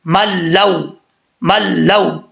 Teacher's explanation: तो इसको कैसे पढ़ेंगे, मीम लाम ज़बर मल, लाम वाव ज़बर लव, मल लव। यहाँ पे इदगाम तो हो रहा है लेकिन गुन्ना नहीं हो रहा